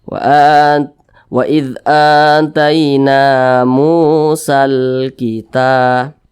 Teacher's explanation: Maka mu ini dibaca panjang. Panjangnya 2 harakat atau kira-kira 2 ketukan, namanya matobi'i atau mad asli.